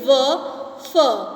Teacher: मतलब दांत और होठ दोनों एक दूसरे को स्पर्श करते हो।